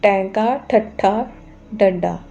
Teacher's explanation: ਜੀਭ ਦੀ ਨੋਕ ਨੂੰ ਪਿਛਲੇ ਪਾਸੇ ਉਲਟਾ ਕੇ ਬੋਲਣ ਵਾਲੀਆਂ ਧੁਨੀਆਂ ਨੂੰ ਮੂਰਤਨੀ ਜਾਂ ਉਲਟ ਜੀਭੀ ਕਹਿੰਦੇ ਨੇ